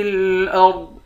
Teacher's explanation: را اور ضاد ان دونوں حرف کو موٹا پڑھیں گے